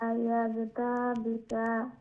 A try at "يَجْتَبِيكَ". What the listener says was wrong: যে ইয়াজতাবি তা লম্বা হবে না বি লম্বা হবে ইয়াজতাবিকা